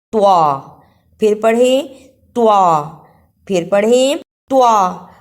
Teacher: اسے شیطانو نہیں پڑھنا، توا کی جگہ پر تا کی آواز نہیں آنی چاہیے، توا کو موٹا پڑھنا ہے